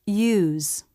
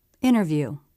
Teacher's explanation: in the stressed version the lips round much more